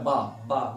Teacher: बा दो ओंठों की हेल्प से बोला था बा बा। देखिए होंठ दोनों मिल रहे हैं। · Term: द्वयोष्ठ